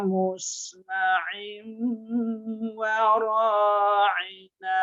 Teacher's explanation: Kalau kita baru musma'in belum masuk ke hidung, berarti bukan idgham ma'al gunnah atau idgham bi gunnah. Jadi membacanya harus benar kita masukkan gunnah itu dengung, dengung itu suara keluar dari hidung.